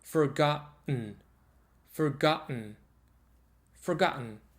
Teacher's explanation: So, if you say forgot and then n, so it's vocal, the glottal stop immediately followed by sound n